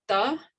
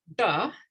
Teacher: one with the tongue behind the teeth, one with the tongue curled up